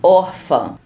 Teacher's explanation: Quando tem o tio e o acento agudo, ou então o tio e o acento circunflexo, onde tem o tio não é a sílaba mais forte, como por exemplo, órfã, a sílaba forte é o or